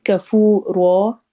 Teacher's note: کفو واؤ مدہ ہے اور رو الف مدہ ہو رہی ہے، اور رو کو ہم نے موٹا پڑھنا ہے